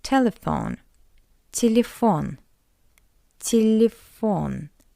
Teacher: In an unstressed position, we read it as a weak e.